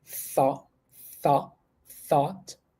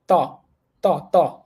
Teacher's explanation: even though we start with a th there we can either say th th thought or to like a t t sound